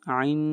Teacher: یہاں پر اخفا ہوگا، نون ساکن کے بعد دال ہے